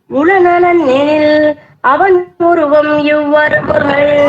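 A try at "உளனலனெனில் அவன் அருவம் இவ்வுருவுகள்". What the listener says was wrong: உளநலன் எனில் அவன் அருவம் இவ்வுருவுகள். உருவம் இல்ல அருவம்.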